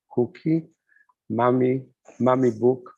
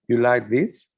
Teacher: So declarative sentences with rising intonation.